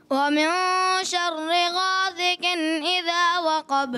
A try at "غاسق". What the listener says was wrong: غاسق غاسین کی بھی آواز سیٹھی ہے. غاسق إذا وقب.